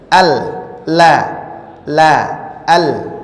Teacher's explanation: Sekarang kita akan lanjut dengan huruf lam. Keluarnya dengan menggerakkan semua lidah dan bertemu dengan ujung langit-langit mulut